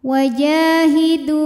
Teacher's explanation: karena ada alif didahului harokat fathah, maka jim panjang 2 harokat. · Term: mad tabi'i dhahiri